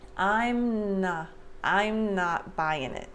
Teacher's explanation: it and here i'm not before i finish the m i'm before i separate my lips i start the n sound for not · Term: no air release